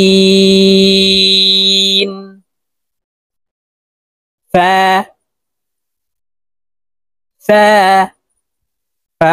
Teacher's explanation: উচ্চারণ করার সময় উপরের দাঁত নিচের ঠোঁটের পেটের সঙ্গে লাগিয়ে উচ্চারণ করব